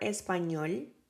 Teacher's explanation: So we have the word español, so the stress, the emphasis in that word is in ñol, español. Doesn't have a tilde, but it has an accent, the stressed, in ñol. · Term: palabras agudas